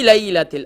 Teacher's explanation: اب لام کے بعد جو یا ہے یہ یا لین ہے، اسے سافٹ کر کے پڑھیں گے اور اسے بغیر کھینچے، بغیر جھٹکا دیے، اور اسی طریقے سے اسے سافٹ کر کے پڑھیں گے.